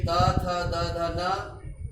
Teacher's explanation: ये दंत से इनका उच्चारण होता है, इसीलिए इनको दंत्याः कहा जाता है।